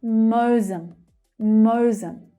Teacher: So the first syllable, we have the /əʊ/ vowel sound.